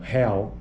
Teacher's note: Então, real, a vogal tônica, real. A sílaba forte é o al.